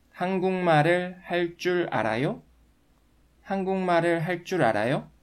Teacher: 할 줄 알아요 is pronounced with double consonant 쯔 sound according to one of the pronunciation rules that you've just learned.